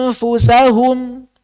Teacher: Mempersiapkan mulut di makhraj huruf kedua. Makanya saat kita mengucapkan anfusahum, kita siap-siap di makhraj fa.